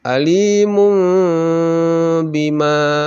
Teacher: Sebaiknya dibaca alimum bima. Jadi terasa mimnya, huruf mimnya, tetapi tidak begitu sempurna. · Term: iklab